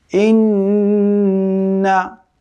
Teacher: ওয়াজিব গুন্না কিন্তু গুন্নার পরে কিন্তু কোন টান হবে না।